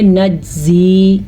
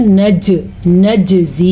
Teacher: नजज़ी, फिर से यहाँ पे कलकले का कायदा हो रहा है क्योंकि जीम के ऊपर साकिन है तो यहाँ पे झटका देंगे और इसे कहते हैं कलकला। अगर हम कलकला नहीं पढ़ेंगे तो अगर हम कलकला अदा नहीं करेंगे तो हम पढ़ेंगे नज्जी, ये गलत है।